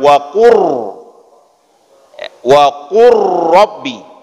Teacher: karena kita sudah masuk langsung ke dalam huruf roh maka ada getaran pada huruf ro itu yang harus kita penuhi